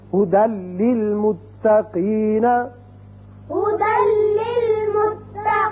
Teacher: دال کی ایک زبر لام سے ملے گی اور بغیر غننے کے پڑھا جائے گا